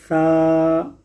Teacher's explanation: سا کے اندر سیٹی کی آواز نہیں آتی